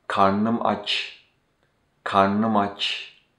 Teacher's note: why ı between re and ne drops when we say karnım, this is due to the vowel omission rule